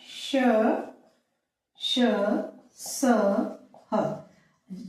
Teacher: इनके उच्चारण में वायु मुह से अधिक निकली महाप्राण